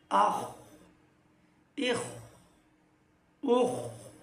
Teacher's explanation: খ হচ্ছে আবার মোটা হরফ মোটাও করে পড়তে হবে